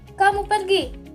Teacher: Kamu pergi itu sebuah pertanyaan dengan nada yang naik. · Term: intonasi